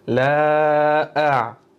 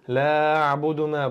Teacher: Bu yerda hamzani birinchi talaffuz qilamiz, undan keyin ayn harfimizga o'tamiz.